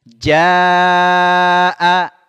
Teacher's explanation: ja bertemu dengan Hamzah a dalam satu kata ini mad wajib muttasil ya mad wajib muttasil kita baca lima harakat ya ID ja